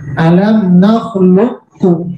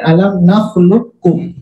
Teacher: Ada kalimat alam nakhluqukum kum, jadi masuk langsung ke kaf. Pantulan qalqalahnya hilang. Alam nakhluqkum.